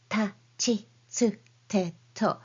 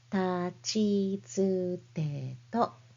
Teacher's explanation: You don't need to pronounce them with a strong puff of air like ta, chi, tsu, te, to, but rather softly ta, chi, tsu, te, to.